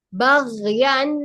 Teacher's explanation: Alirkannya, rokhwahnya agak lebih lama lagi durasinya. Baghyan. Bukan yannya yang panjang.